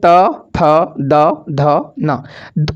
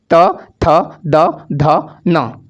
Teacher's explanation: ऊपर नीचे दोनों दांतों के बीच में आपके जीभ का अगला भाग टच होता है। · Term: दंत व्यंजन